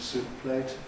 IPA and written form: ˈsuːʔ pleɪt (soup plate)